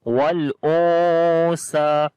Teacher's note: After the noon sakin, the next letter is sa, which is one of from 15 ikhfa letters. So we make ikhfa sound, we hide the sound of noon here. Wal o sa. Sa we long due to standing fatha on it, because standing fatha is equal to alif madda.